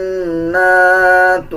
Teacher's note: نون کے اوپر شد آ رہا ہے، غنہ کیا جائے گا اور غننے کی آواز کو ناک سے نکالا جائے گا